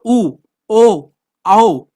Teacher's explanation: जहां पर हमारे जो होंठ हो रहे हैं वो गोल हो रहे हैं बोलते समय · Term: आवृतमुखी